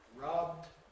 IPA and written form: rʌbd (rubbed)